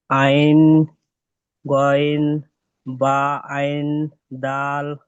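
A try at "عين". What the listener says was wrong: আইন গইন তিন আলিফ করে টান হবে না? তিন আলিফ করে টান। আইন তিন আলিফ টান দেন ভাই আইন দাল।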